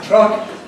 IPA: trʌk